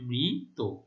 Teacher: আচ্ছা, তাহলে এমনিতে এটি মৃত, মৃত ত প্রত্যয় দ্বারা গঠিত শব্দ, সেই জন্য মৃত, মৃত নয়। হ্যাঁ, শেষের অটি ও এর মতো উচ্চারিত হচ্ছে, যার ফলে আমরা এভাবে লিখব মৃত। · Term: সংবৃত